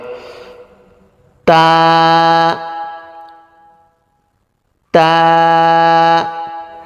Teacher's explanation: জিহ্বার আগা সামনের উপরের দুই দাঁতের গোড়ার সাথে লাগবে, মুখ খুলে উচ্চারণ করবে, এক আলিফ টান হবে।